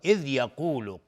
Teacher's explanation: قاف از حروف استعلاء غلیظ طرف میشه